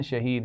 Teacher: شہید میں یا مدہ ہے اور آخر میں دال پر قلقلہ کیا جائے گا